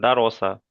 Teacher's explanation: দাল টান হবে না, র টান হবে না, সেন টান হবে না, কোনো জায়গায় টান হবে না